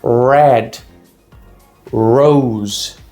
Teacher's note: Não é red, como muita gente fala, é red. Vai ser aquele R mais enrolado na língua que a gente tem de R sozinho no meio de palavra em português